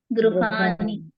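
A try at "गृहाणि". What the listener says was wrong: గృహాణి నకారం వస్తుంది. గృహం ఎందుకంటే అక్కడ మీకు రుకారం ఉంది, రుకారం ఉంది కాబట్టి నాగా మారిపోతుంది అది. గృహాణి. మీకు ఎక్కడైతే పదంలో రుకారం కానీ షకారం కానీ రకారం కానీ ఉంటుందో అక్కడ నకారము నకారంగా మారిపోతుంది.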